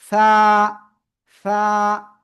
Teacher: ওকে, এরপরে আমরা শিখেছিলাম এই অক্ষরটা, জিহ্বার আগা উপরে দুই দাঁতের আগা লাগাবো, এই যে লাগিয়ে আমরা এটা উচ্চারণ করব, সা।